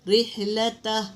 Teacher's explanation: را کے نیچے دیکھو زیر ہے تو اس کو باریک پڑھیں گے